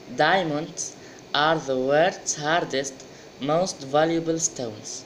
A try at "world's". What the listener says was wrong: I didn't hear the L. The world's. Don't pronounce the R, but you have to pronounce the L. عادي ما تطقش ال R. لكن مش عادي ما تطقش ال L. So you say world's.